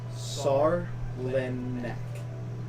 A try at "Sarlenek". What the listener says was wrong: Sar. No, not sad. Sar. Lin. Sarlenek. Sarlenek.